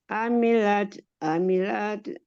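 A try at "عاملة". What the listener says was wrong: Amilah. amilah, amilat. Jadi satu pakai H, amilah. Yang kedua pakai ta, amilat, panjang.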